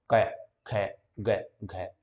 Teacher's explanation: तो यहाँ पर जो है जो कै वर्ग है, आपको ध्यान रखना है इसका उच्चारण क्या है, कै। उच्चारण स्थान जो है क्या होता है, कंठ, जहां से हम बोलते हैं